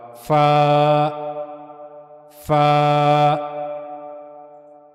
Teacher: اوپر کے اگلے دو دانتوں کے کنارے نیچے کے ہونٹ کے اندرونی حصے سے جب جا کر ملیں گے تو وہاں سے فا ادا ہوگا